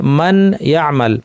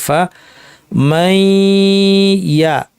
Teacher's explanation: যেমন নুন সাকিন পর ইয়া এসেছে মান ইয়ামাল, এখানে আমরা বলছি এটা গুন্না সহ ইদগাম, অর্থাৎ নুনকে আমরা ইয়া বানিয়ে দুইটা ইয়া অর্থাৎ তাসদিদ যুক্ত ইয়া হিসেবে পড়ব ঠিকই, কিন্তু এর অর্ধেকে আমরা গুন্না করব